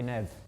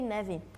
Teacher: did you notice the difference between the Portugal Portuguese he said Nev kind of cut instead she said nevi